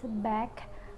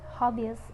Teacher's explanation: B is voiced bilabial stop